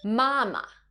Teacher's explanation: Mama, which has the first flat tone.